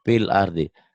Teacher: Fil ardi, seakan-akan nggak ada panjang ya.